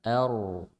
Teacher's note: Hamzah tipis, ro tebal, ya, dod dibaca tebal